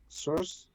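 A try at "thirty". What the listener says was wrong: You drop the T. You drop the T. So you say 30. 30.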